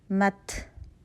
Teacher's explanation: جب تا ساکن ہوگا تو ہمس کی کوالٹی زیادہ واضح ہوگی